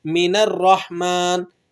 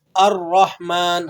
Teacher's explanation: حمزہ نہیں پڑھ رہے، بلکہ ہم کس طرح سے پڑھ رہے ہیں؟ نون کو را سے جوڑ کر